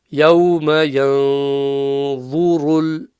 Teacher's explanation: The va is a full mouth letter as it is anyway, but the ra becomes full mouth because of the dhamma